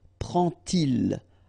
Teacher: And so this little d here is in red just to show you that you won't pronounce it like d to make the liaison, but you will pronounce it like t